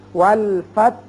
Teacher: وصل کی صورت میں جب آگے ملانا چاہیں گے، وقف نہیں کریں گے تو فتح پڑھیں گے، لیکن جب آپ وقف کریں گے اور آیت بھی ختم ہو رہی ہے، وقف کرنا وقف سنت ہے، لہذا ہا ساکن پڑھا جائے گا. ہم پڑھیں گے والفتح، یعنی تا بھی ساکن، ہا بھی.